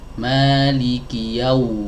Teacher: Ini sering kali kami dapatkan di masyarakat mendengungkan huruf waw. Padahal huruf waw bukan huruf gunnah, ya. Bukan dikeluarkan dari al-khayshum tapi dari dua bibir.